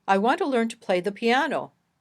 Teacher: the word piano is emphasized more than the other words it can also be longer louder higher in pitch and clearer we say that this word has sentence Focus if a sentence